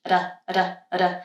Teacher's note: instead of holding the tongue there, d, d, I'm doing one little flap of the tongue and touching the alveolar ridge, ada, ada, ada, which is why I add the vowel sound before, so that I can have a sound going, lift my tongue up, and tap once for the r sound.